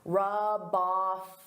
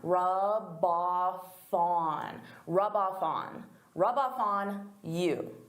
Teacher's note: So here I'm taking the F from off and I'm adding it to on.